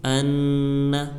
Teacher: حمزہ نون زبر ان، نون زبر نہ، ان، تو ہم اس کو ایک الف کے برابر کھینچ کر ناک میں گنہ ہو کر پڑھیں گے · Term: حرف گنہ